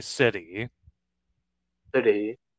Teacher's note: we kind of say the T kind of like a D, using that flap T, we would say instead of city, we would say city.